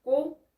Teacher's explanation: 앞에 받침이 뒤에 모음에 붙어서 원래의 소리가 그대로 나게 되는 것입니다